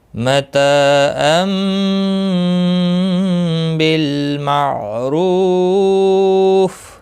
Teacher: متا تا الف مدہ ہے، ایک الف کے برابر کھینچ کر پڑھیں گے۔